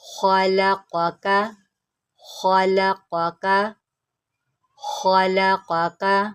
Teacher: خا اور قاف یہ دونوں موٹے پڑے جائیں گے، ان کو موٹا کرتے ہوئے آپ نے لام اور کاف کو موٹا نہیں کرنا۔